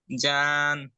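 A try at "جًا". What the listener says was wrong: জান, টান হবে না।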